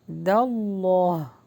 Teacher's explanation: حرف جلالہ ہے یعنی اللہ کے نام کو پر کر کے پڑھیں گے